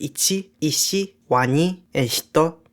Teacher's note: Before I and the glides ya, yo, and yu, consonants become palatalized. Usually the consonant doesn't change beyond adding palatalization, but ta changes further to tia, sa becomes xia, na becomes nya, and ha becomes hya, in words like ichi, ishi, wani, and hito.